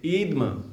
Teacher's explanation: छोटी ई की मात्रा को कुछ लोग बड़ी ई की मात्रा यानी ह्रस्व को दीर्घ के समान उच्चारित कर देते हैं · दीर्घ इकार का उच्चारण कर लिया, और जो धकार था उसे धा ना बोलते हुए दा